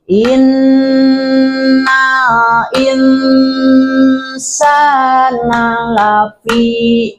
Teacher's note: kalau disebut ifa itu bacanya nunnya samar kemudian didengung ya